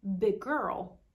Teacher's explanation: And sometimes if the first word ends in the same consonant that the next word starts with, we just pronounce it as one consonant.